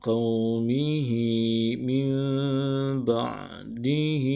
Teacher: Menunjukkan bacaan huruf ha di sini perlu dipanjangkan dengan kadar 2 harakat.